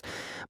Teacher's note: And that's why I have to pause and take a big deep breath after every sentence, because he's using a lot of breath. A lot of breath is coming through with the growl